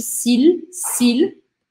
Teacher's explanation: Eu não falo s'il, eu não engulo o L. Eu tenho que falar o L separadamente.